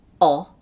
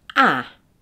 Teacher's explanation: now say o and notice the difference in your lips your lips should be more spread for ah